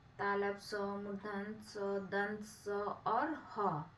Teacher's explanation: इनका उच्चारण उष्म वायु के रगड़ या घर्षण से होता है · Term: उष्म वर्ण